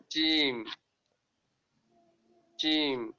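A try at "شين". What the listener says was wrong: Sheen. This is not Jim, this is Sheen.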